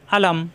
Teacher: আ কণ্ঠনালীর শুরু থেকে, লা জিব্বার আগার কিনারা উপরের দাঁতের গোড়ায় লাগিয়ে, লা মিলবে মিমের সাথে।